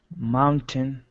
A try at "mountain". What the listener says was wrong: Reduce pronunciation on the second syllable, not mountain. That's a very common mistake for second language speakers.